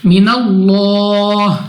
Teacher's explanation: اللہ کو پر پڑھیں گے، یعنی موٹا منہ اور آواز کو کھول کر، اور آخر میں ہماری آواز جو ہے وہ ہا پہ آ کے ختم ہونی چاہیے۔ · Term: لام اف اللہ